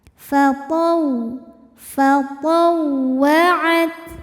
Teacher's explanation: Maka jangan ditahan karena ini bukan idgham bighunah. Wau tasydid cukup dibaca menggunakan nabr. Artinya kita meninggikan intonasi suara kita. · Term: nabar